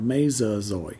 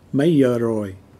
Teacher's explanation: the GI sound is pronounced like a Z up north, and so is the R.